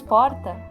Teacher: quando nós falamos porta a sílaba mais forte é o por então por isso que ela sílaba tônica regador dor é a